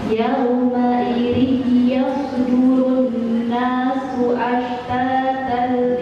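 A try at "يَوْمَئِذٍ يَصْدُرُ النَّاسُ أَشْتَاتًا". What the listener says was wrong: Ya, durasi dengungannya masih kurang panjang. Yauma idzi yasdurun nasu ashtata.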